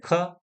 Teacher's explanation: जो क वर्ग है वह पूरा कंठ से उच्चारित किया जाता है।